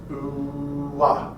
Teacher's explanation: start with oo and then move to ah, oo ah. All right, you'll hear the wah sound coming out of that one as well.